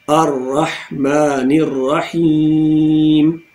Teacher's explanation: ہا middle throat سے